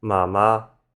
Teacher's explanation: the first syllable for mom in mama is a changed tone. You notice that the word for mother is written with 2 of the same character, ma, and in the dictionary that's a high flat tone.